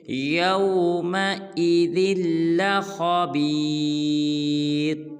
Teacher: ذال کو لام مشدد کے ساتھ ملائیں گے